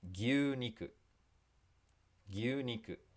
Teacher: there's a doubled vowel sound here with two U sounds. Okay, that just makes the vowel sound longer.